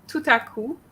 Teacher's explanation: you made the liaison between the T and the a